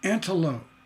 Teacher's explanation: antelope you hear that i never said the p